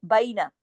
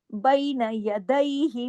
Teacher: उर्दू की तरह नहीं, ये याई लीन है